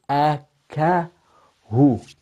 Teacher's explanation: the ha from the bottom of the throat